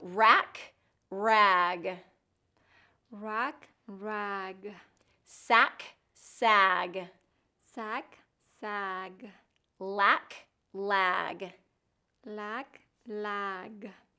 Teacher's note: K is the voiceless and G is the voiced